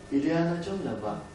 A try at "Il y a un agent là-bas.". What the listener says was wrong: Bon, de toute évidence, ici, vous constatez que le B est devenu V. Hein, donc, diagnostiquons l'erreur. Hein. Manque de tension. Que faut-il faire pour obtenir la tension? Il faut placer le B à l'initiale par le découpage, de la manière suivante, par exemple, bas.